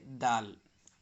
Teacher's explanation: سامنے کے اوپر کے دو دانت کو زبان کی نوک لگانے یعنی ثنایا علیا کی دانت کو زبان کی نوک لگانے سے دال نکلتا ہے